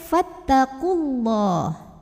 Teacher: Sedangkan kalau tidak berhenti, gugur mad tabi'inya, qafnya dibaca pendek, fattaqullah. Kenapa? Karena ada 2 huruf sukun bertemu, yaitu huruf sukun yang pertama waw sukun, waw mad, yang kedua lam sukun, ya. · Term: takhallus bil hadfi